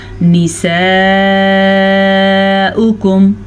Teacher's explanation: یہ والی مد لمبی والی مد ہے. اس کی مقدار تقریباً 5 حرکات عربیہ ہے، تو 4 سے 5 سیکنڈ تک آپ نے اس کو لمبا ضرور کرنا ہے.